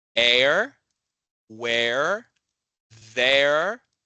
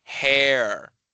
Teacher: So, uh, dear it's ear, but with this dip thong air where it's an a sound kind of starts more in the back of your mouth and then moves forward